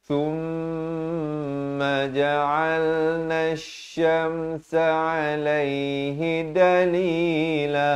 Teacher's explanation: Nun berfathah di atas shin yang bersabdu. Alif lam syamsiah di sini lamnya tidak dibunyikan.